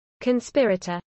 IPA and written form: kənˈspɪɹ.ə.təɹ (conspirator)